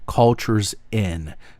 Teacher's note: If the word starts with a vowel, but the last word before it ended with a consonant, so cultures ends with S, and in begins with a vowel, you will start the word with the last consonant. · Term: liaison